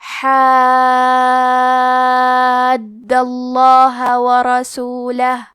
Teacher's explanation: حکم ہے تفخیم، تو ہمیں حرف اللام کو موٹی آواز میں پڑھنا ہے